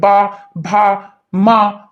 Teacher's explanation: जब आप बा बोलेंगे तो देखिए दोनों ओठे आपकी टकरा रही है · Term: ओष्ठ